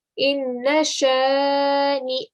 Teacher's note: you cannot add a ya sound. There is only a noon and a hamza